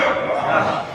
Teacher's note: হা টা যেন গলার ভিতর থেকে আসে।